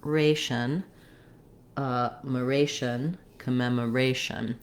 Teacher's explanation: in words that end with a t o n or Asian the syllable with the a is always stressed so the second to last syllable